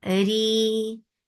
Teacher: Ra is light because there is kasra under it and make it two counts long.